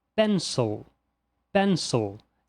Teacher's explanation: Então nós falamos pencil, pencil, e não pencil. Perceba que não há o som de I, e sim o som característico do schwa